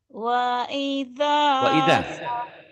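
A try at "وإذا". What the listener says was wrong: wa-nya jangan panjang. Wa idza.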